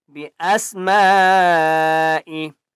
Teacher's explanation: بڑی مد ہے، 5 الف کی مقدار کھینچ کر پڑھیں گے